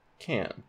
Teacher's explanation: So we take this aspirated K, we nasalize the ash here, and we have n. So our surface form is can. · nasalize the vowel because it's before an n